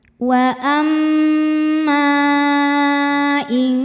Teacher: Maka cara bacanya mim dipanjangkan boleh empat boleh lima harakat. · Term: mad jaiz munfasil